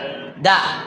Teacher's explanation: Nah lihat, ujung lidah dengan pangkal gigi seri atas.